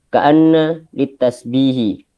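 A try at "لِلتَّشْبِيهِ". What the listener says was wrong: tashbih. Shinnya kurang bagus. Tashbih, coba. Bukan tas. Tash. Tash.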